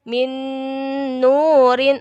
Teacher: Jadi kayak double nun gitu. Jadi bacanya melebur dan mendengung. Min nurin, agak ditahan masuk ke huruf berikutnya. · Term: idgham biguna